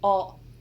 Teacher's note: The T's normally at the end are glottalized